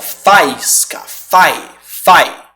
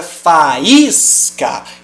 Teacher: o som do a formaria um ditongo com i ele engoliria o som da semivogal